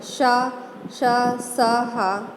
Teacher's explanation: इन वर्णों का उच्चारण करते समय श्वास गति से मुख से रगड़ खाती हुई बाहर निकलती है जिससे गर्मी उत्पन्न होती है, इसलिए ये ऊष्म व्यंजन कहलाते हैं।